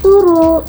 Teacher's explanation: Yang pertama pada kata turu, yaitu ada proses penyederhanaan karena bunyi b di tengah hilang dan vokalnya diseragamkan jadi u